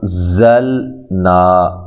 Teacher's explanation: یہ زا جو ہے زور سے ادا کرنا ہے، سیٹی کے ساتھ اس کو ادا کرنا ہے۔ نون پہ جو مد ہے یہ مد جائز ہے، ٹھیک ہے۔